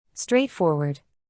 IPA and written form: ˌstreɪtˈfɔr.wɚd (straightforward)